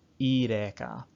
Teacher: the epsilon iota diphthong or pseudo-diphthong is raised to e